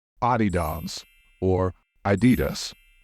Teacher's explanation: The stress in this word should fall on either the first or second syllable, so it should be pronounced in two ways, Adidas or Adidas.